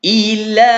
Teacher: Ila 4 harakat ataupun 2 ayunan.